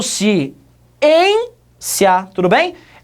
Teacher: A segunda sílaba é que é a mais forte. Trata-se, portanto, de uma palavra paroxítona. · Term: sílaba mais forte